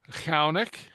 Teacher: Past tense would be Chunnaic, lenited. Okay, kind of the rumbling guttural ch sound.